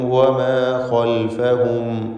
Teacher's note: ഖൽഫഹും ഈ പദത്തിൽ ഖായിനെ പൂർണ്ണമായ തഫ്ഖീം നൽകി തടിപ്പിച്ച് സ്വരഭാരത്തോടെ ഉച്ചരിക്കുക. ഇസ്തിഅലാന്റെ ഹർഫാണ്.